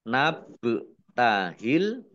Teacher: ba sukun bacaan qolqalah atau memantul ya dibaca ditampakkan pantulannya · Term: kolkolah